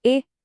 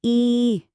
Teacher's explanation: ए की ध्वनि भी तेज और छोटी है, और ई की ध्वनि को हम थोड़ा खींचते हैं, वो लंबी होती है। सुनिए, ए ई।